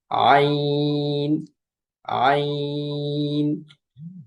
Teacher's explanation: কণ্ঠনালীর মধ্যখান হইতে উচ্চারিত হয় আইন